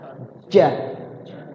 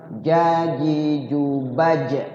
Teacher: Jaji jubaj nempel. Jadi melengkung, lidah kita melengkung nempel di atas. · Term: huruf jim